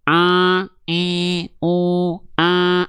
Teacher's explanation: Ada gelombang yang masuk hidung tuh. Gelombang suaranya masih masuk masih masuk hidung